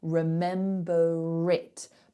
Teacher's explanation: when you have a vowel that starts the next word, so remember it, if I want to link those two words together, I have to pronounce the R. Remember it, because suddenly there's a vowel there. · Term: linking R